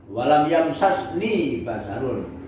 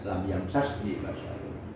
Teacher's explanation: Jadi beda antara Hijaz dengan Bani Tamim. Kalau orang Hijaz cenderung untuk membuka idghamnya. Makanya dalam Quran surat Maryam itu walam yamsasni basarun, berarti itu lughatu ahlil Hijaz, lam yamsasni basarun.